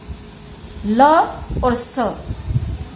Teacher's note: री और त वर्ग पूरा, ल और स, इनका उच्चारण स्थान दंत है, इसलिए इन्हें दंत्य कहा जाता है।